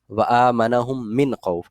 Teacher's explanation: نون ساکن کے بعد ہمیں حروف حلقی نظر آ رہا ہے، اس حروف حلقی کی وجہ سے ہم یہاں پر غنہ نہیں کریں گے